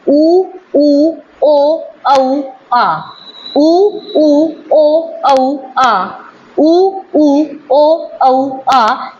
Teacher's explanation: जीभ के पीछे वाले हिस्से से बोले जाते हैं वो हमारे 5 स्वर हैं, उ, ओ, औ, आ, ठीक है। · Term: पश्च स्वर